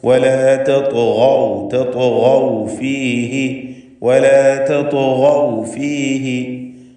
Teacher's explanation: കൂടാതെ അതിന് ഖൽഖലയുണ്ട്. സാക്കിനത്തായ ത്വാഇന് ഖൽഖല സുഗ്റ നൽകി ശബ്ദം ഹറക്കത്ത് പോലെ ചലിപ്പിക്കുക. ശേഷം ഗൈന് വന്നു, അതിനെ തഫ്ഖീം ചെയ്യണം, പൂർണ്ണമായ തഫ്ഖീം കൊടുക്കുക.